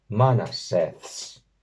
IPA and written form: 'ma.na.seːθs (MANASĒÞS)